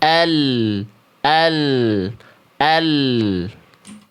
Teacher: Dari tepi lidah depan baik yang kiri dan juga yang kanan, dia menyisir sampai ke ujung lidah, nempel ke langit-langit bagian depan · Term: huruf lam